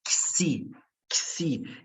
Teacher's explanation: Mas o fato é, esse X, ele tem o som de K e S. Ele tem um duplo som, XI, XI.